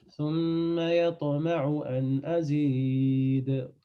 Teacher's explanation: قلقلة sur ta, قلقلة sur da à la fin